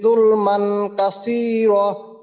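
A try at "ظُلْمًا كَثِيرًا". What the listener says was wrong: এই যে এইখানে যুলমান না, যুলমান অনুস্বরের মতো, যুলমান ইকফা গুণ হবে, যুলমান কাসীরা।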